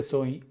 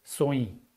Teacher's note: When there is a feminine plural subject, the verb form at the end of the sentence will get nasalization. That's why we have the nasalized participle, soi.